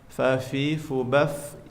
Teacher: makhrajnya dari bibir bagian dalam beserta ujung gigi depan bagian atas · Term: huruf fa